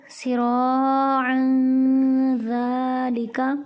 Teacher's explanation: تنوین کے بعد ذال حروف اخفا میں سے ہے، اس لیے یہاں پر غنہ کر کے پڑھیں گے